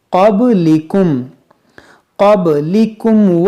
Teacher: دیکھیے قاف حروف مشتعلیہ ہے، با میں قلقلہ کریں گے، اس قاف کو موٹا کریں گے، با میں قلقلہ کریں گے۔